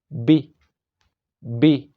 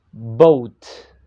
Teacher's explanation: air while we pronounce it so it's gonna be b b only lips not teeth at all